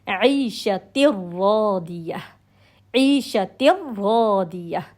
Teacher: اس کے اندر مرجنگ، اس کے اندر مدغم ہو رہا ہے، لام اور را مدغم ہو رہا ہے، اس کے اندر مرج ہو رہا ہے، پورا مکس ہو رہا ہے، لیکن غنہ کا ساؤنڈ نہیں آ رہا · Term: ادغام کامل